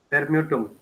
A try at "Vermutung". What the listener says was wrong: Vermutung. Yeah, not new, move. Ohne Umlaut.